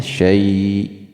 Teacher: Kemudian syai itu ada huruf ya sukun, sebelumnya berharakah fathah, hukumnya mad layyin. Mad artinya panjang, layyin artinya lembut, jadi dipanjangkan syai-nya